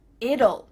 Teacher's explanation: we kind of add a little u sound before the l it kind of sounds like ull